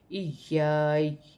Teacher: वफ की सूरत में ज़बर गिर जाएगी और या साकिन हो जाएगी। वफ की सूरत में या की हल्की सी आवाज़ आएगी